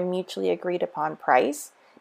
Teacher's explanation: we have the Y intrusion because it's a vowel to vowel